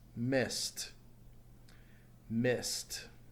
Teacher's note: since it ends in a sound not vibrating takes a T sound at the end